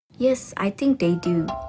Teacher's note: She uses a fall rising tone appropriately to indicate that she doesn't really know or is unsure.